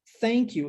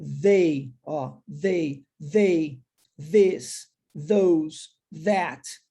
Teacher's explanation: Todos esses possuem o TH com som vozeado